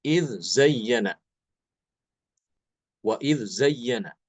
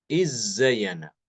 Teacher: imam hisyamnya membaca dengan mengidamkan Dal ke dalam Z